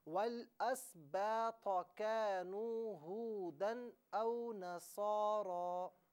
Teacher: والاسباط میں جو طا ہے نا تو اسے موٹا کر کے پر کر کے پڑھنا ہے